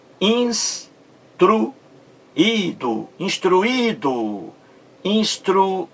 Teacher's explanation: Muito bem. Esse I aí, como você vê, forma também um hiato em relação à vogal anterior, U. · A sílaba mais forte, como você vê, está no segundo I.